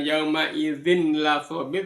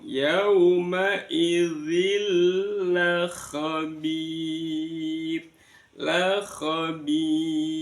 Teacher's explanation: namanya bacaan idgam bila ghunah dimasukkan dengan tidak mendengung